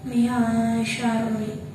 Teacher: Di situ ada nun mati bertemu dengan huruf sya, maka cara bacanya samar. Nama bacanya 1 alif atau 2 harokat. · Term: ikfa ausat